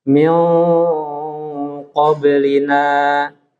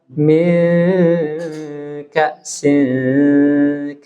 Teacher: Eng tapi tebal Min qoblina tapi kalau Min Kasin ini tarkik sama-sama bersuara Eng dia antara Q dengan Kaf ini tapi dia tebal dan tipis